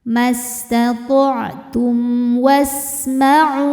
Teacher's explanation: Tum ada hukum izhar syafawi. Karena mim sukun menghadapi huruf selain mim dan ba yaitu huruf waw. Maka mim dibaca jelas.